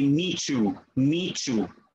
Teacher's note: The T and the Y become assimilated together